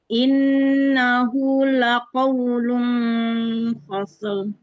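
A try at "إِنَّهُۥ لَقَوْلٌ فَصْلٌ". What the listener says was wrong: Jangan langsung, sadnya dialirkan dulu. Innahu laqawlun fasl. Fasl.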